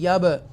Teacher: یہ با جو ہے وہ حروف قلقلہ میں سے ہے تو ایکو ساؤنڈ کے ساتھ پڑھیں گے